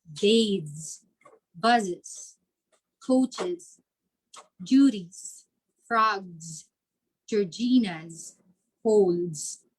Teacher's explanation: s would be produced as z at the end of the word